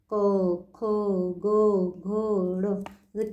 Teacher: पीछे यानी गले में गला का कंठ जहां आती है वहीं पे साउंड आएगी। अपने जो टंग होती है वो कहीं भी टच नहीं करेगी।